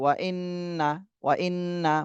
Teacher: وإنما أنا نذير مبين وإنما أنا نذير মুবিন ওয়া ইন্না, তাহলে হরকতের বামে নুনে তাসদিদ, এখানেও ওয়াজিব গুণনা করতে হবে। ওয়া ইন্না মাতে 3 আলিফ টান দিতে হবে, 3 আলিফের চিহ্ন রয়েছে।